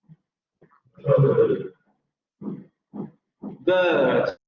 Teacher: Vean, cómo ahora sí, la lengua, no la punta de la lengua, sino el dorso de la lengua, ya se echa hacia la parte central, que sería la parte del paladar duro y la parte del velar de la boca